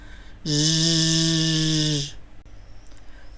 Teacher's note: Коли ми вимовляємо цей звук, наш язичок піднімається вгору і стає схожим на чашечку. Губки округлюються і трохи витягуються вперед. Коли ми дуємо на язичок, у щілинку між зубками виходить тепленький вітерець.